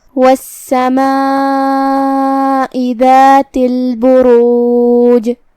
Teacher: کلمت والسماء میں یہاں حرف السین ہے اور اس پہ تشدید ہے کیونکہ اس سے پہلے لام الشمسیہ ہے. ہم سین کو 2 حرف کے برابر پڑھیں گے کیونکہ تشدید کی اصلیت 2 حرف ہوتی ہے. جیسا کہ یہاں حرف السین ہے تو یہ 2 سین ہیں، سین ساکن اور سین متحرک زبر سے.